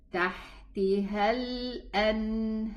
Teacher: I elevate my pronunciation of the ra sukoon.